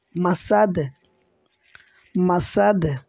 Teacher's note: দাল দুই জের দিন, মাসা দিন, মাসা দিন। এখানে ওয়াকফ করলে বা থামলে দালে মনে মনে জজম দিতে হবে, তখন দালটা কলকলা হবে মাসাদ, মাসাদ।